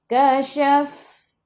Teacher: Untuk fa sifat hurufnya pun hamas. Kena keluar angin.